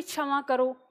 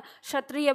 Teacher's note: हम छ का उच्चारण करते हैं लेकिन मुर्धा से करते हैं तो छ का उच्चारण मुर्धा से जब हम क्ष बोलते हैं